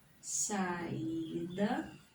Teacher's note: Aqui está em posição de paroxítona. Olha só. A sílaba mais forte é a penúltima.